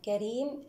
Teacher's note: الكاف مع حرف الراء هنا تباعد كبير حكمه الإظهار. الراء مرققة لأنها مكسورة. الياء في حال الوصل ما الطبيعي بمقدار حركتان، أما في حال الوقف عفوا، في حال الوقف نقف بمد عارض للسكون حركتان أو 4 أو 6 حركات.